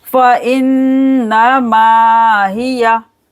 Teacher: नून पर गुन्ना करेंगे 2 सेकंड के लिए। फिर मीम को खींचेंगे 2 सेकंड के लिए।